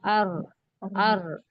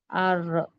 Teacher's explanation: जबान की नोक और ऊपर दांतों की जड़ का ऊपरी हिस्सा। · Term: र का मखरज